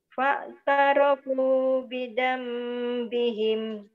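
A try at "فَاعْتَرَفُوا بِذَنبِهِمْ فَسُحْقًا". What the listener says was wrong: Diulang lagi. Jangan putus di tengah. Fa'tarafu bidambihim fasuq. Jangan putus. Iya, kan enggak ada tanda waqaf.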